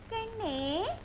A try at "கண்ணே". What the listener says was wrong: ஐயோ ராகம் பாடாதீங்க நான் செஞ்சு காமிக்கிறேன் அப்படியே பாத்துட்டீங்களா கண்ணே ஐயோ அப்படி இல்ல கண்ணே